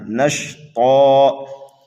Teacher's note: حرف طا پر جب وقف کریں گے تو یہاں پر بھی وقف بالابدال ہوگا، دو زبر کو الف سے بدل دیں گے۔ حرف طا حروف مستعلیہ میں سے ہے، اس لیے اس کو پر کر کے پڑھنا ہے، نشطا۔